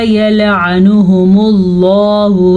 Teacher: لفظ اللہ کو پر پڑھیں گے پیچھے پیش کی وجہ سے.